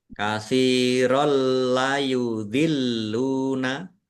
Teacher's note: Fathah tanwin bertemu dengan huruf lam idgham bila gunah masuk dengan tidak mendengung. Langsung masuk ke huruf lam ditandai lamnya ada tasdidnya tapi tidak mendengung.